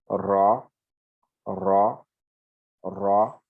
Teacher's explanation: il faudrait que le dos de la langue puisse vibrer et ce n'est pas dans la gorge.